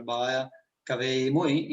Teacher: il fenomeno di evanescenza e del scomparimento della L intervocaica, che è tipica del veneziano e del veneto centrale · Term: L taia